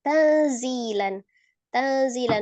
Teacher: antara n dengan samar disertai dengan ghunnah yang kamila sempurna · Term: Ikhfa hakiki yang ausat